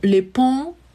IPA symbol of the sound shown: ɔ̃